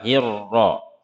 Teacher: Hirra, roknya dibaca tebal, hirra.